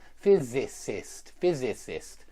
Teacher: stress on the Fizz